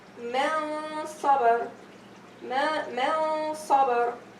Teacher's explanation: The noon here is pronounced with ikhfa, and the ghunna is pronounced with tafkhim because it's followed by letter sad, and sad is one of those isti'la letter of tafkhim letters.